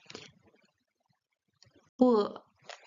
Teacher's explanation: The difference is that the B sound in Chinese is more closer to a P sound. You don't blow air out of your mouth, but the lips are really strong when you pronounce the B.